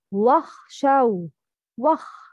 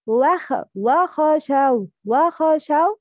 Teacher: Pronounce letter خا with سكون clearly and don't apply قلقلة to it.